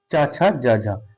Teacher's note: च का उच्चारण स्थान क्या होता है तालू